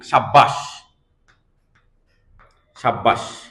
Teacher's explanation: সাব্বাস যখন আমি বলতেছি তখন আমি দুইটা বা উচ্চারণ করতেছি